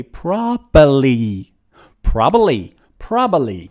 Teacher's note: native speakers remove the second B